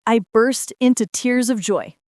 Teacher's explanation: Yes, and notice the pronunciation of burst. The R sound is soft, not rolled.